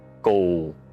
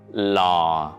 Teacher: you begin at the mid-low pitch and let your voice gradually fall to a lower pitch. The movement should be soft, slow, relaxed, and smooth.